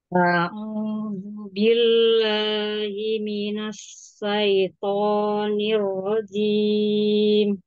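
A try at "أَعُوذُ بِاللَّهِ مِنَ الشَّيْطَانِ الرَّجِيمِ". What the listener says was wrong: Huruf shinnya tambah lagi sebaran suaranya Asyayopon.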